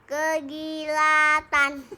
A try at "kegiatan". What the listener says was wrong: Kegiatan. Terus kan ini i. Kegiatan nggak ada L-nya. Kalau ada L-nya di kegilatan. Ini nggak ada L-nya kan?